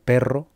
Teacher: la doble R española de, por ejemplo, perro, que esta técnicamente se llamaría vibrante alveolar múltiple